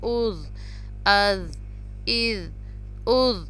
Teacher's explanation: اب آگے ذال ہے جو زبان کی نوک سے ادا ہوتا ہے، یعنی کہ ہماری زبان جو ہے وہ سامنے والے دو دانت کے ساتھ جو ہے ٹچ ہوتی ہے، تھوڑی سی زبان نکالی جاتی ہے، زیادہ زبان نہیں نکالتے، اس کو ٹچ کرتے ہیں دانتوں کو.